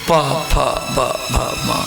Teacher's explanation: ओठ, होठ से ये दोनों होठ जब सटेगा तो प फ ब भ म, ये 5 अक्षर की उत्पत्ति होगी। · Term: ओष्ठवर्ण